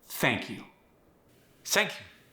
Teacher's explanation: The TH sound went to the S sound, which is very common.